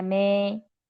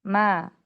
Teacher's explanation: Fathah dibaca fathah, nggak imala me, ma, buka rahangnya. Ya, selain mulut yang dibuka rahangnya.